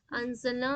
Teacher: नून के साउंड को हाइड करना है आपको नाक में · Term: गुना